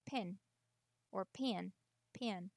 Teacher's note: Pin. It's longer. It's not a short P-I-N.